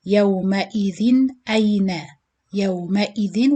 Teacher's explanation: You read it yawma idhin ayna, yawma idhin, with clear noon sakin sound on the tanween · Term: idhar halqi